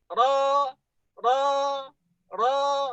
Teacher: Jadi dia harus disamarkan ya, dan dia takrir ini hanya satu getaran lembut ujung lidah